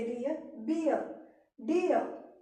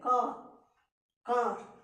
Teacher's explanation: आर को हम ज्यादा प्रोनाउंस नहीं करते हैं।